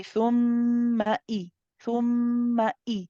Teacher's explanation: There's a sharpness. You cut off the sound, you start the sound again. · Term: shidda